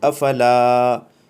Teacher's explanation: الف مدہ کی پہچان تو شروع میں آپ پڑھ ہی چکے ہیں کہ الف ہونا چاہیے اور اس سے پہلے کسی حرف کے اوپر اگر زبر ہے تو وہ الف مدہ کہلاتا ہے اور اس کو کھینچ کر پڑھتے ہیں